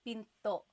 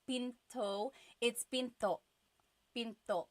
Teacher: Do you hear the glottal stop when I say pinto?